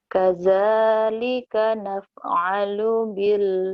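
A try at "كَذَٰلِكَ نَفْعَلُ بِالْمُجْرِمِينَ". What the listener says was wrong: Lu-nya panjang apa pendek ya? Lu-nya panjang apa pendek ya? Pendek. Tadi ada ketahan sedikit. Coba, jangan ditahan.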